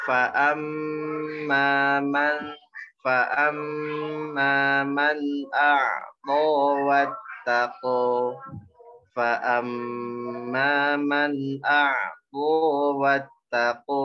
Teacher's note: Huruf fa tipis ya. Ada sifat ta'afuf atau ada suara af gitu ya.